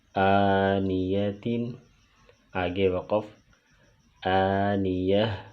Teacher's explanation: اور اسی طرح یہ بات بھی یاد رکھیں کہ گول تا وقف میں ہا بن جاتی ہے، تو اگر ہم وقف کی حالت میں آنیتن کو پڑھیں گے تو یہاں تا جو ہے وہ ہا کی آواز پیدا کرے گی